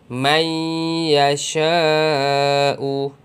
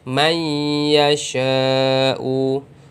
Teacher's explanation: nun dimasukkan, bunyi nun dimasukkan ke dalam bunyi ya. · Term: idgham ma'al gunnah